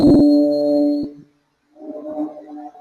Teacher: Kita panjangkan suara bu. Ya, maka muncul di situ huruf mad yaitu waw. Jadi memanjangkan suara dengan salah satu huruf mad.